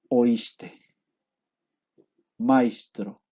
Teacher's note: Hemos diptongado por un lado y hemos llevado a sh, la articulación, la S.